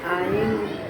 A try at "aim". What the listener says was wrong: Not I. Bukan I bacanya. A.